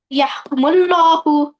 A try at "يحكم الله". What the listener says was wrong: kumul नहीं kumallahu mim को ऊपर जबर है kumallahu